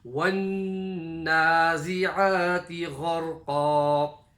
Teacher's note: Noon, mushaddada gunna, ayn from the middle of the throat, and ghayn from the top of the throat